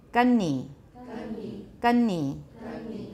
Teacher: I'm trying to remember to lengthen the nasal now.